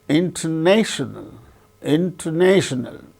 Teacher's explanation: so the third syllable gains primary stress first syllable gains secondary stress